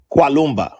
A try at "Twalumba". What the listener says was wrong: Twa with a T. Twalumba.